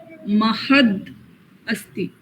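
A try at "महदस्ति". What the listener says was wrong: Yeah, tell it together. Join and tell, because it's a sandhi. You can't say Mahadasti. You have to say Mahadasti.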